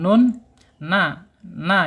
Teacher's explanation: Alisannya di ujung ujung lidah menyentuh langit-langit di bawah huruf lam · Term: nun sukun